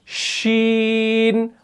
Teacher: जुबान का जो बीच वाला हिस्सा है ये ऊपर के तालु के साथ नहीं लगता।